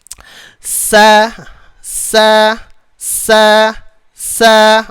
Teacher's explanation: Dia ada suara desiran ataupun siulan. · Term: safir